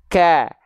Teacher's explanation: berharakat dia seperti seolah kurang terdengar percikan nafasnya Alasannya kenapa karena ketika dia berharakat Bunyi atau percikan nafasya itu terhalang oleh bunyi vokal yang keluar setelahnya